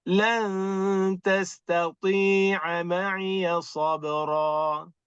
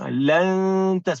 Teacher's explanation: Nun sakinah tu kita samar-samarkan bunyi dia untuk sebut huruf ta yang berikutnya.